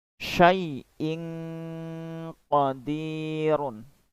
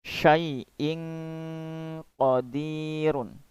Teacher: Contoh berikutnya yang tanwin bila bertemu dengan huruf qaf, contohnya ya, saya ambil huruf qaf, maka pada lafal berikut ini ada tanwin di sana, kemudian diikuti dengan huruf qaf. Wajib membacanya dengan ikhfa.